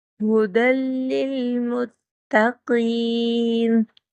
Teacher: ہا وہ ہا ہے جو سینے کی جانب سے ادا ہوتا ہے